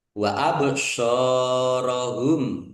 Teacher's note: bak sukun bacaan kolkolah dibaca memantul ditampakkan pantulannya